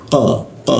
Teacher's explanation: Di sikit tenggorokan. lidahnya diangkat sehingga tidak ada hembusan udaranya.